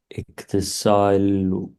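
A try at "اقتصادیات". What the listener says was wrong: इक्तिसाद दाल है, इक्तिसाद यात।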